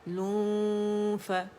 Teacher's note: نون کو چھپائیں گے، right away فا کے مخرج کے قریب جائیں گے ، اوپر کے ہمارے 2 دانتوں کے ایجز، نچلے ہونٹ کا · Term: اخفا